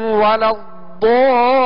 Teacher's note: ضاد پر مد لازم ہے جسے دراز کریں گے اور کھینچ کر ادا کریں گے